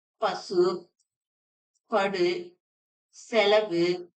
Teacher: இறுதியில் உள்ள உகரத்துக்கு முழு ஓசை இருக்கு. அதாவது ஒரு மாத்திரை எனவே இது ஒவ்வொன்னுமே முற்றியல் உகரம்.